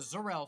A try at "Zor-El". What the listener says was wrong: You said Zor-El. Zor. There's an O in there.